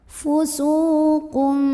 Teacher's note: Karena ada waw sukun sebelumnya dhammah, maka cara membunyikannya, sin yang baris dhammah kita panjangkan 2 harokat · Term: mad tabi'i